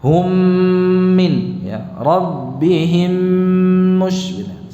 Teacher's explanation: Di dalam membacanya itu dengan memanjangkan durasi ghunnahnya. · Hukumnya idgham mithlain saghir atau idgham mutamathilain. Mim sukun bertemu dengan mim. Jadi dibaca seperti kita membaca mim tasydid.